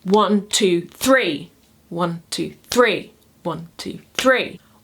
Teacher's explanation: Anapestic rhythm is a rising triple. It is 2 unstressed syllables followed by a stressed syllable.